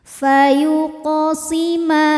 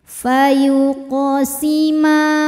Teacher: Sebab ada huruf qalqalah yaitu qaf yang sukunnya asli dan ada di tengah bacaan kita. Cara membaca huruf qafnya adalah dipantulkan dengan pantulan yang kecil. Fayuqasima, sambil lewat ya, jadi tidak seperti orang kaget pantulannya. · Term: qalqalah sugro